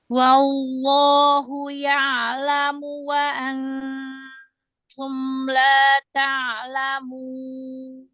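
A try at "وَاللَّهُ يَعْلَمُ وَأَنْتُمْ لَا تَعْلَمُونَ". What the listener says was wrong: Hamas pada wa antum kurangin hamasnya. Wallah langsung ke lam lebarkan makhraj lam.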